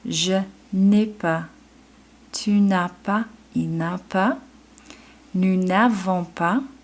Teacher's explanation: the ne drops the E every single time with avoir because we have those vowels